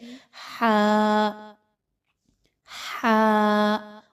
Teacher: اب یہ کہاں سے ادا کیا جاتا ہے؟ تو ہا جو ہے وہ حلق کے درمیانی حصے سے ادا کیا جاتا ہے